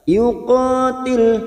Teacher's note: Wa may yuqatil, qaf fathah diikuti alif 2 harakat. Yuqatil, lam sukun hanya masuk, jangan sampai terpantul.